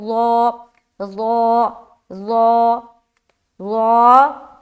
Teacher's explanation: ظا کو موٹا کر کے پڑھیں گے، حروف مستعلیہ میں سے ایک ہے، سیٹی کی آواز نہیں آئے گی